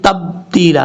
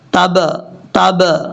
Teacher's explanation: بعد جو با ہے یہ با حروف قلقلہ میں سے ہے، یہاں پر قلقلہ کریں گے یعنی باؤنس آئے گا ، اگر آپ پڑھیں گے تبتیلا تو یہ غلط طریقہ ہے،